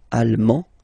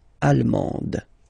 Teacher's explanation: you don't pronounce the final D, but then you pronounce it here for the feminine form. Allemande, d, d, okay?